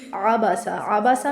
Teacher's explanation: عبسا میں عین حلق سے ادا ہوگا، سین کو سیٹی کے ساتھ ادا کریں گے